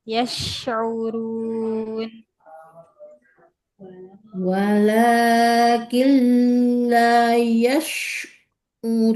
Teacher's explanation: huruf shinnya menyebar nafasnya. Yash, tempelkan tengah lidah dengan langit-langit.